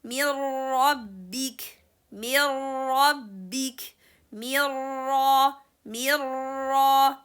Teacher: You see, there's no any trace or anything from letter noon. So the noon is completely inserted with the sound of letter ra.